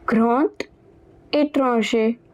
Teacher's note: there is the liaison, where the second word it begins with a vowel and the first one it ends with D. So over here the D, it will be pronounced as T.